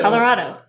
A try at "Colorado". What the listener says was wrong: No, not Rado.